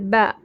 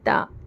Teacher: क्या पढ़े जबर जेर पेश वाले हर्फ को जल्दी पढ़ेंगे और जबर वाली हर्फ को जब हम पढ़ रहे तो आवाज ऊपर जाएंगी और हमारा मुंह खड़ा खुलेगा और आवाज भी खुली आएंगी